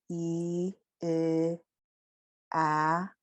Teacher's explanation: closer to the lips, to the front of the mouth, E, A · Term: forward vowels